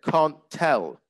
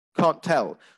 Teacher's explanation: So if you've got 2 t sounds which are next to each other, one of them disappears.